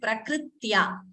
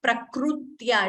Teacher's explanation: it is prakritya it is not prakrutya it is not u and there is no dvitvam also it is not prakritya the extra k should not be heard